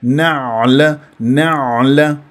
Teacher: انزل الى وسط الحلق عميقه العين العربيه الفصيحه تحس بانزعاج في المخرج وكانه عم تبلع شي